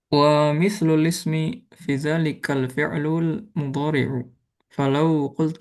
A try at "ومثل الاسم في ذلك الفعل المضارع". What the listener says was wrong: ومثل الاسم في ذلك الفعل المضارع. Mungkin bisa juga di nadanya. Jadi bukan wa mithlu lismi fi dzalikal fi'lu. Lah, jangan nadanya kayak gitu. Wa mithlu lismi fi dzalika al fi'lul mudhari'u.